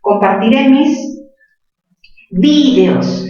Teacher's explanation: Compartiré mis videos, mayor fuerza en vi. Pero también podría decir compartiré mis videos, por eso no se tilda, porque es grave terminar en S.